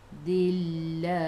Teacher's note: Sebelum Allah ada baris bawah kena baca dengan nipis. Bila berhenti matikan dengan ha.